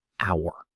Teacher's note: The h is silent, so it sounds like a vowel, and that's why we say an hour, not a hour.